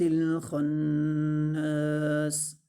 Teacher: خا کو موٹا پڑھیں گے اور نون کے ساتھ ملائیں گے اور نون مشدد پر غنہ بھی کریں گے اور نون کو ایک الف کے برابر لمبا بھی کریں گے۔